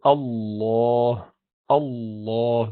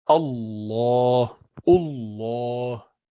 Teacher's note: it's an elevation of the base of the tongue to make it heavy so say Allah you do not have to round your lips